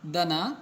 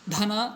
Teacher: ಅಲ್ಪಪ್ರಾಣ ಮಹಾಪ್ರಾಣಕ್ಕಿರ್ತಕ್ಕಂಥ ವ್ಯತ್ಯಾಸ ಏನು ಅಂದರೆ, ಅಲ್ಪಪ್ರಾಣಕ್ಕಿಂತ ಮಹಾಪ್ರಾಣ ಅಕ್ಷರವನ್ನು ಉಚ್ಚಾರಣೆ ಮಾಡತಕ್ಕಂಥ ಸಂದರ್ಭದಲ್ಲಿ ನಾವು ಹೇರು ಧ್ವನಿಯಲ್ಲಿ ಉಚ್ಚಾರಣೆ ಮಾಡ್ತೀವಿ